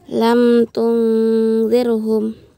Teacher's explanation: mim sukun bertemu dengan huruf ta dibaca jelas dan dihukumi izhar syafawi.